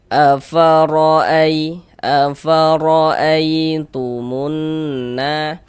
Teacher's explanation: Maka semua huruf ro yang barusan kami sebutkan itu, huruf ro memiliki harakat fathah, huruf ro memiliki harakat dhammah. Maka huruf ro dibaca tebal, dibaca tabkhim. sehingganya pangkal lisan kita naik terangkat ke atas ketika kita mengucapkannya · huruf ro dibaca tebal, dibaca tafkhim, sehingganya pangkal lisan kita naik terangkat ke atas ketika kita mengucapkannya, ditebalkan huruf ro-nya, jadi pangkal lidah kita naik terangkat.